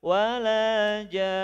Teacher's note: Gunahkan di rongga hidung 2 ketukan.